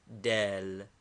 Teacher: a soft dental D as in Italian